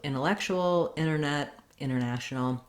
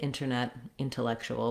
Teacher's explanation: native speakers will often leave off the T in NT words when the NT is in the middle of the word